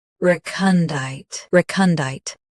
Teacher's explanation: Stress re. Keep kun soft, then clear deet.